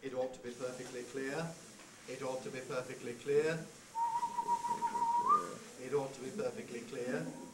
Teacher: page and come to our last kind of head which is the low head which is said on a low pitch throughout